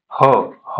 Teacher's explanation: ह ला ताकद लागली जाते. उच्चार करताना मोठा श्वास घ्यावा लागतो. याला महाप्राण असं म्हटलं जातं.